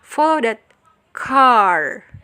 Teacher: follow that-nya mungkin bisa disambung menjadi satu sehingga jadi cepat, dan car-nya itu mendapatkan penekanan